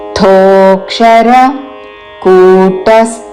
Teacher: ధోక్షర అనకూడదు థో దీర్ఘముతో